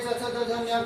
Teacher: तालु से इनका उच्चारण होता है